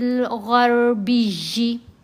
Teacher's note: غین کو را سے ملایا، را کو موٹا پڑھیں گے، غین کو بھی موٹا پڑھیں گے